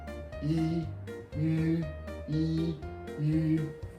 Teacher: your voice is from front highest place